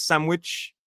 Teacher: I find sandwich the pronunciation in British English is sandwich. American is sandwich with a ch sound at the end. But you hear a lot of varieties like sandwich like with a m sound instead of a n.